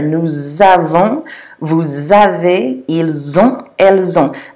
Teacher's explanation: avons, avez, and ont all begin with vowels. So you have to make that Z sound.